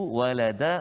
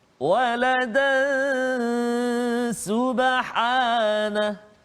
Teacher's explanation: Tetapi kalau kita sambung bacaan kita, maka dekat situ dia berlaku tanwin bertemu dengan sin, iaitu ikhfa hakiki, dengung 2 harakat bacaan dia